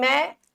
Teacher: मैं, ए और आई की साउंड कर रहा है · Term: आई की मात्रा